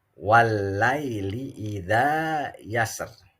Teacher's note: Nah, kalau dibaca waqaf, ini ro tafkhim. Tapi kalau dibacanya wasol, terjadinya ro tarqiq.